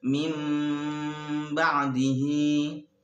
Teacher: mengganti suara nun mati kepada suara mim mati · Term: iqlab